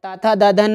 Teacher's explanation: इनका उच्चारण करने में जीभ दांतों को स्पर्श करती है